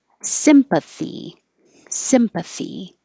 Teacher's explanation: And the noun has stress on the first syllable.